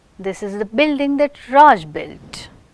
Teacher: Here we are giving who has built this. So, we want to give importance to Raj. So, that one is receiving the stress and it is made the nucleus.